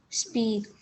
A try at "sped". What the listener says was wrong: You said speed. It's closed in. It has the S sound. Sped.